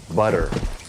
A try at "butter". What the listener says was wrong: Where's your tongue? Exactly where I just told you a minute ago, right? You're doing the Spanish R right there. You didn't even realize it.